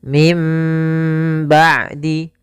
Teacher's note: Iklab yaitu membalikkan suara nun menjadi suara mim. Maka di sini ditandai dengan ditanda di huruf mim atasnya, dalam rosamnya ada mim kecil di atasnya.